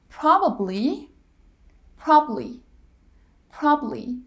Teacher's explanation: probably probably probably that middle syllable is dropped